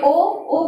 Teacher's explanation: ओ जो है आ प्लस उ से बना है। तो आ का कंठ, उ का ओष्ठ। तो इस तरह ओ का उच्चारण स्थान कंठोष्ठ।